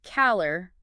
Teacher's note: Like in calor, meaning heat, the lor gets the emphasis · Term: stress